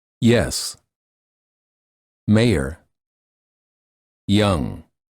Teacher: the tip of the tongue touches the lower front teeth. The front of the tongue is raised near the hard palate